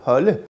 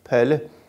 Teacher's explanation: Den vokal er næsten rigtig i Polle, men de fleste fynboer vil synes, at det skulle udtales som Pølle. Med en lille smule mere ø-klang end år-klang.